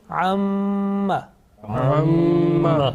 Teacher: there is a sustained continuous nasal sound, okay, about 2 seconds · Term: Meem Gunna